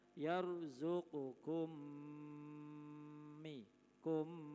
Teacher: Mim mati bertemu dengan mim hidup namanya bacaan idgham mim. Memasukkan atau meleburnya huruf mim mati kepada mim hidup